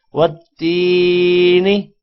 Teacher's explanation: یہ یا مدہ ہے، یا ساکن سے پہلے زیر ہو تو یا مدہ ہوتا ہے، اور یا مدہ کو 1 الف کے برابر لمبا کیا جاتا ہے